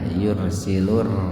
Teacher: Jadi kalau digabung begini, alif lam syamsiyah tarqik. Jadi membacanya diidgamkan ke huruf ro dan rnya dibaca tipis. Alif lamnya diabaikan saja.